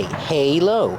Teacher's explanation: The word is pronounced halo with a long A, like say and day.